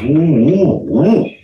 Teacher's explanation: 押的韵呢，其实押的是韵母啊，都是呜啊。呜，这是个闭口音啊 ，呜呜呜，是吧？这个尾曲也是这个样子了，呜呜呜啊。但这个呜呢，这个声音呢，它就是比较的收敛，比较压抑，比较悠长啊，这么一个声音的。啊